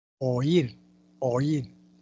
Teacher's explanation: La I tiene mayor fuerza que la A. Oír, oír, la mayor fuerza de voz en la cerrada, I. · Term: hiato acentual